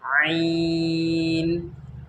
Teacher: हलक के बीच के हिस्से से आइन अदा होती है